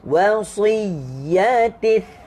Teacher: Dia cuma ada sifat ham sahaja di situ, iaitu angin yang keluar.